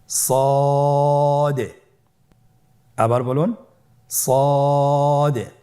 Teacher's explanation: সদ হরফটি পর হরফ। মোটা হরফ উচ্চারণ ক্ষেত্রে মোটা করে পড়তে হবে এবং উচ্চারণ করার সময় তিন আলিফ টেনে পড়তে হবে।